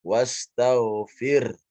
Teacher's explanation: fokus kepada sukun ya di ro dan ha. Wastaghfir. Keluarkan ha di ujungnya.